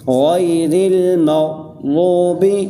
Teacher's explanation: جو میں پہلے قاعدہ بتا چکا کہ را کے اوپر زبر یا پیش ہو تو را موٹی پڑھی جاتی ہے، اس را کے نیچے زیر ہے اس لیے یہ را باریک پڑھی جائے گی